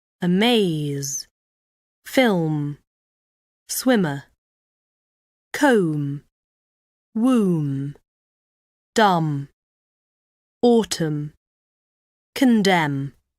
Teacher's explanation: lightly squeeze your lips together all the way along breathe out through your nose this sound is always voiced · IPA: /m/